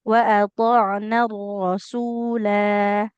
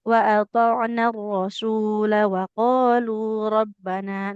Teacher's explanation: Kalau di akhir dia tetap dibaca panjang. Tapi kalau kita lanjutkan, nggak panjang lagi. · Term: sifar mustatil